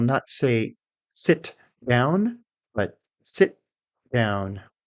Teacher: Can you hear in the second version how the t is not being released? No puff of air. We simply hold our tongue up to the gum ridge, and then transition into the next sound. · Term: held t